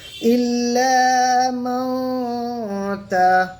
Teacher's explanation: নুন সাকিনের আওয়াজকে নাকের মধ্যে নুকাইয়ে রেখে এক আলিফ পরিমাণ গুন্না সহ পড়বো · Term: ইখফা